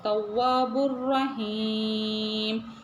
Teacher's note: கொடுக்கணும் வாவுக்கு பக்கத்துல அலிஃப் இருக்கு மத் அஸ்லி டு கவுண்ட் ஈட்டணும் தவ்வாபுர் ராவுல பாருங்க ஷத் இருக்குது அதே மேல ஃபத்ஹா இருக்கறதுனால அழுத்தம் கொடுத்து நல்லா தப்ஸீமாக சொல்லணும் நம்ம சொல்லுவோம் தவ்வாபுர் ரஹீம் லாஸ்ட் எண்டிங்ல பார்த்தீங்கன்னா மீம்க்கு சுகூன் வைப்போம் மீம்க்கு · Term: தஃப்ஹீமாக